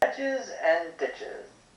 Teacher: in the phrase hedges and ditches, the hedge and the ditch sounds are stressed more than the other sounds